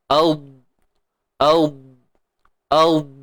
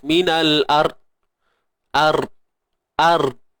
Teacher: Tidak ada sifat lantunan pada dad.